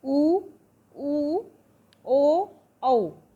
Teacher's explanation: इनका उच्चारण करते समय ओष्ठ वृत्ताकार हो जाते हैं अर्थात गोल हो जाते हैं। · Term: वृत्ताकार स्वर